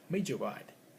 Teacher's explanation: rule 10.5 is one word ends in a d, and the next word begins with y. We can say we can combine the two sounds become j.